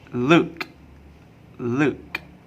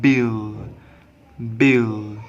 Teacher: L is pronounced with the tongue rest in the back of the mouth towards the velum. When L sound occurs after a vowel, I will refer this to pronounce with the tongue rest in the back of the mouth towards the velum.